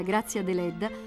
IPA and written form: ˈɡrattsja deˈlɛdda (Grazia Deledda)